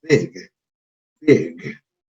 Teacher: este sonido que vemos aquí, que es la I, no lo pronunciamos como la I del español, sino un sonido que está entre la I y la E. O sea, este sonido de acá no es ni I, tampoco es E. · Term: sonido intermedio